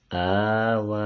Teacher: دونوں کو ایک الف کی مقدار کھینچ کر پڑھیں گے چونکہ ان پر کھڑی حرکت ہے اور کھڑی حرکت کی مقدار ایک الف ہے۔